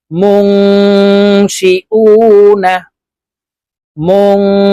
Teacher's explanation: এই যে নুন সাকিনের পরে ইকফার হরফ সিন আসছে এই কারণে এই নুন সাকিনকে নাকের ভিতরে লুকাইয়া গুন্না সহিত পড়বো